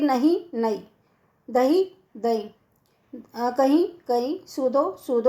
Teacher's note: बुंदेली में अधिकतर महाप्राण व्यंजनों का अल्प प्राणीकरण हो जाता है।